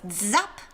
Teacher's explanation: it's z like with a d ish sound at the beginning